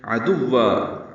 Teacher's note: عین وسط حلق سے ادا کریں گے، دال کو واو سے ملائیں گے.